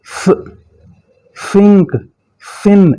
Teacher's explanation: और ये theta sound कहते हैं इसे। फ जुबान का अगले वाला हिस्सा दोनों दांतों के दरमियान में थोड़ा सा रखेंगे।